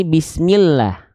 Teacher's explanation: lafaz Allah oke di sini diikuti dia dengan bunyi vokal I maka lafaz Allahnya dibaca dengan karakter yang tipis maka akan terdengar menjadi vokal a